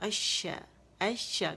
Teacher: اور لام کا شین میں ادغام ہو جائے گا کیونکہ شمسی حرف ہے. دیکھیں ہم الشا پڑھتے تو ذرا اور سا بھی لگتا، تو ہماری آسانی کے لیے رب العالمین نے کیا کیا کہ اس شمسی حرف کا اپنے اندر لام کو لے لو تاکہ میرے بندوں کو پڑھنے میں آسانی ہو.